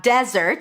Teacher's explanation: we have desert, stress on the first syllable.